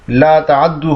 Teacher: تا کو دال کر دیا اور دال کا دال میں ادغام کر دیا